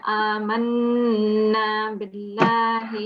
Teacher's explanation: So 2 seconds nasal sound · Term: noon mushaddad